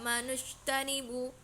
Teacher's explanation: ada jim yang disukun di tengah kalimat. Cara membacanya yakni adalah memantul dengan rendah ya, atau bisa disebut dengan qalqalah. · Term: qalqalah sughra